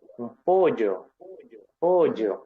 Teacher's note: Es con un sonido del aire un poco más lateral a la lengua.